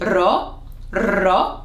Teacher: it is a R sound, an R sound. R, but we roll it a bit. Ro, ro. If you can't roll your R's, I would highly suggest practicing because the Greek sound needs the R.